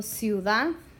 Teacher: The weak I clings to the weak u, and it makes one syllable and one sound. So this word has two syllables.